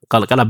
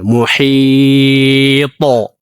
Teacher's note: ሙሂጥ የሚለው ላይ ስናቆም ቀልቀላ በደንብና መጀመሪያ ጧ እናወፍራለን ቀልቀላውም እናጎላዋለን ሙሂጦ በዚህ መልኩ ማለት ነው አጦ አጦ ጦ ጦ ጦ ጡ